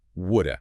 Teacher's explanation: The have is completely gone. There's no h sound. There's no v sound. It's just a schwa, that little lazy uh sound.